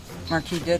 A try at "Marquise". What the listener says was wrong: I'm sorry, it's Marquise. With an S.